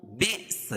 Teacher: یہ حمزہ اپنی شکل میں ہے تو یہاں جزم ہے تو حمزہ کے اوپر جزم ہے تو یہاں جھٹکا ہوگا